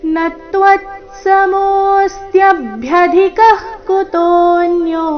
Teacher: ನತ್ವತ್ ನ ಮೇಲೆ ಆಘಾತ ಮುಂದೆ ತ್ವ ಇದ್ದ ಕಾರಣ ನತ್ವತ್ ನತ್ವ ಆದ ನಂತರ ಅರ್ಧ ತಕಾರ ನತ್ವತ್